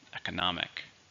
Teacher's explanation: 4, stress on the third syllable.